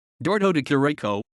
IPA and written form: ˈdʒordʒo deˈkiːriko (Giorgio de Chirico)